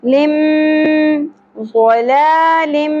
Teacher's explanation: دو زیر تنوین کے بعد میم مشدد آ رہا ہے تو یہاں پر ادغام مع الغنہ ہوگا